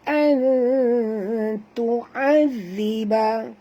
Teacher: Nun mati bertemu ta, sorok dan dengung, ikhfa hakiki.